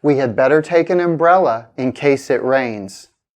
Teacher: We can pause after umbrella. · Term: thought groups